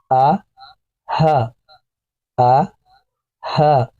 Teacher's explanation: حلق کا گلے کا آخری حصہ، تو یہاں سے حمزہ اور ہا پڑھا جاتا ہے. نرمی سے دونوں آوازوں کو پڑھیں گے، حمزہ اور ہا.